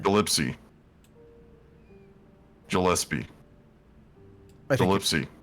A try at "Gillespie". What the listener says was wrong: I think you pronounce the G. think it's Gillespie or Gillespie.